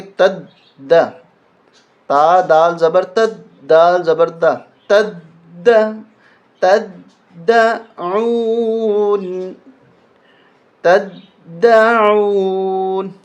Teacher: تا کو دال کے اوپر تشدید ہونے کی وجہ سے سختی کے ساتھ پڑھیں گے، تا کو دال کے ساتھ دبائیں گے، تد، تا دال زبر تد، دال زبر دا، تد، تدعون، تدعون۔